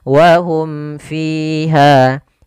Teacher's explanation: Jelas suara mimnya dan tidak boleh ditahan. Wahum fiha, ya, tidak boleh saktah juga. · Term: izhar syafawi